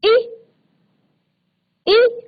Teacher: इसी तरह से ई, ई, जब आप ई का उच्चारण करते हैं, च का उच्चारण करते हैं, छ का उच्चारण करते हैं, तो कहां से हमारा ये उच्चारित हो रहा है, तालू से